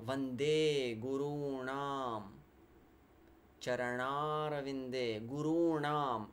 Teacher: It's not a dental na. It's that cerebral na. You need to lift your tongue and curl it.